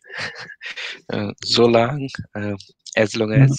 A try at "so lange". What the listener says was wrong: You have to pronounce the. Okay, don't try to. My teacher would say you are eating the words. So lange, not so lang. So lange.